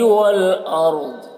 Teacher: والارض را کو پر پڑھیں گے اور یہاں پر تا وقف مطلق کی علامت ہے، وقف کریں گے تو ضاد کی زیر سکون سے بدل جائے گا اور ضاد کو پر پڑھنا ہے